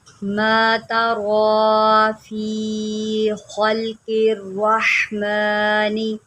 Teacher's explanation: را کے اوپر کھڑا زبر ہے، اس کو لمبا کرے اور اس کو موٹا کر کے پڑھے